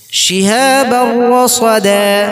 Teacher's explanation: বা তানবিনের পরে র আছে, তানবির উচ্চারণটা হযফ করে র এর সাথে আমরা ইদগাম বিলা গুন্না করে ধরব। শিহাবার রাসাদা, দা একালি পরিমাণ টান, এটাকে মধ্যে আওয়াজ।